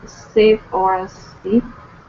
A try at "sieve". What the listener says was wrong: Sieve. It's pronounced like a short I, sieve. It looks like the leave. It looks like an E sound, but this is a tricky one, right?